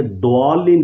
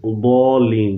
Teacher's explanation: اصل لفظ ہے کہ ضالین، یعنی یہ زبان کا جو پچھلا کنارہ ہے، دائیں ہو یا بائیں ہو، کوئی بھی ایک اٹھا کر اوپر کی دائیں یا بائیں داڑوں کی جڑ میں لگائیں گے تو اس وقت لفظ ضاد ادا ہوگا صحیح طور پر۔ اس کی پریکٹس کرنے سے یہ صحیح طور پر ادا ہو جاتا ہے۔